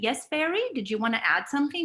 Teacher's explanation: Now, if we reverse the pattern, as you can see, it's a rising intonation because it is a question